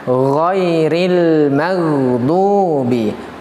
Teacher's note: Yang benar adalah huruf gha dengan tidak menampakkan sifat qalqalahnya, karena dia memang bukan huruf qalqalah